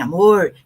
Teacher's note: Bem paranaense assim, amor, que é aquele Retroflexo